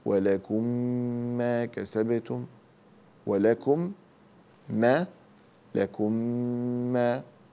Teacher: وإذا جاء بعد الميم الساكنة ميم متحركة فهذا يسمى إدغام مثلين، فأدغم الميم الأولى في الثانية، أقول ولكم ما كسبتم، ولكم ما، لكم ما، اسم إدغام متماثلين صغير.